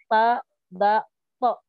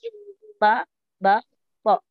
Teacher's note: Maju lagi paling depan adalah ta, da, to. Ada di belakang gigi atas.